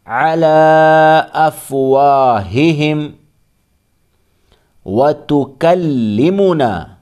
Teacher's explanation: کھڑا زبر جو الف مدہ کے برابر ہے، اس کے بعد حمزہ دوسرے کلمے میں ہے تو یہاں مد منفصل ہوگا